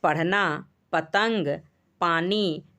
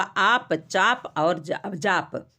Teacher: पहले प स्फोटित शब्द के प्रारंभ में है, दूसरा प अस्फोटित शब्द के अंत में है।